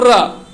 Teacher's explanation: र क्या है कि मूर्धन्य से इसका निकल रहा है